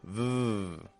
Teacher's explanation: the letter V, like V, is what we would call a fricative sound. This means that it flows out. It doesn't build up in pressure, it's just flowing. V. However, a lot of people will build up pressure when they pronounce their V's, and they'll give it a bit more of a b kind of sound.